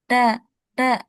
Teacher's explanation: Jadi suaranya kedengaran bindeng, enggak keluar. Nah, itu kalau tandanya huruf itu punya ghunnah atau dengung.